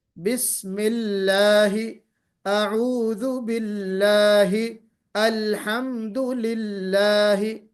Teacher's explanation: لفظ اللہ کے لام سے پہلے اگر زیر آ گیا تو موٹا نہیں پڑھیں گے بلکہ باریک پڑھیں گے